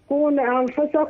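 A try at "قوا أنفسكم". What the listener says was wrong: لا مش كون. قو أ.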